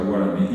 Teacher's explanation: la G de guaraní, que es una G aspirada, suave, comparado con la J